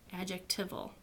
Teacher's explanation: Longer words have secondary stress, as in adjectival.